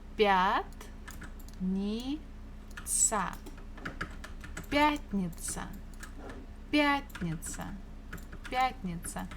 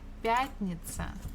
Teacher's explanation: Stress falls on я.